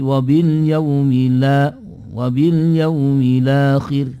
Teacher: hamzahnya dibuang, harokatnya hamzah dipindahkan pada huruf lam sukun itu, yang disebut dengan istilah hukum naql.